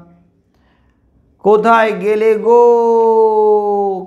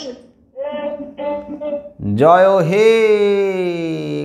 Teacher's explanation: প্লুতস্বর মানে যে স্বরধ্বনিকে আমরা টেনে টেনে উচ্চারণ করি, দীর্ঘ করে উচ্চারণ করি, প্রলম্বিত করে উচ্চারণ করি, তাই প্লুতস্বর।